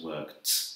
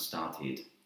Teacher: So work becomes worked, it has like a T sound, and start becomes started, and that has an id sound